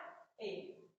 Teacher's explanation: दूसरा अग्र अर्ध समृद्ध स्वर। अग्र अर्ध समृद्ध स्वर, इसमें ए आता है।